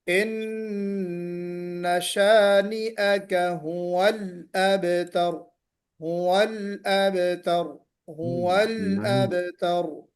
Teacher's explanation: ہوا لام پر قلقلہ نہیں ہونا، اب تر میں قلقلہ ہوگا، لام پر قلقلہ نہیں ہوگا